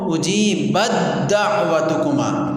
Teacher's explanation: تو تا کا ہم نے دال میں ادغام کیا، جس کی وجہ سے تا ختم ہو گئی، حذف ہو گئی، تو اس کو ہم نے اجیبت کو اجیبت دعوتکما، تا کو ختم کر دیا، دال ہم لے آئے اور اجیبت دعوتکما پڑھا ہے۔